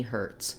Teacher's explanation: we have the tense er sound letter t says a true t here hurts i do let some air out and the letter z